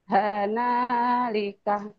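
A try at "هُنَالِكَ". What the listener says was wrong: Hana, Hana salah bukan Hana, bukan Hana. Huna, Hunalika.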